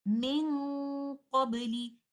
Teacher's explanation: we go to the makhraj of letter qaaf and kaaf and then give ghunnah. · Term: ikhfa of letter qaf